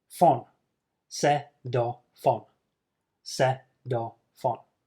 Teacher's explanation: the final F is moved to the next word, on, so it becomes fon. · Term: linking